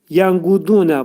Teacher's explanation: Qafın məxrəci demək dilin sonu və dilçəyin başlanğıcındadır